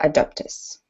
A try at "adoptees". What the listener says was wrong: Just this word here, you need to pronounce the E sound a little bit more. So adoptees. Adoptees. Yeah, it's a bit like employees. So you've got to emphasize the double E because otherwise it's a little bit unclear what the word is.